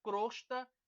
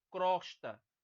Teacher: é crosta e não crosta, certo? O timbre é fechado. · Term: timbre fechado